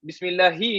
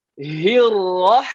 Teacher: Yang hi yang pertama di bawah kerongkong. Hi yang rahman ni di tengah.